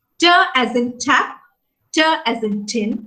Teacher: the tip of the tongue will touch the alveolar ridge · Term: alveolar sounds